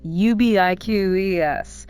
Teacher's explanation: Stress the second syllable.